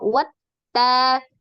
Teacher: sini ada eh langsung ditasdidkan ke huruf ta ya wat ta jadi WAnya tidak menjadi panjang tapi ada penekanan